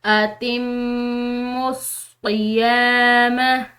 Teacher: मुशदिद मीम पर गुना होता है तो इस पर हम गुना करते हुए आगे जाएंगे